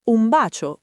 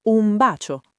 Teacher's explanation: diciamo un bacio con quella N che tende verso la M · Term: assimilazione